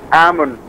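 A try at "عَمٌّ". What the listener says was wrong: Pakai hamzah, bukan pakai ain. Kalau amun, paman dari jalur bapak, dari jalur laki-laki.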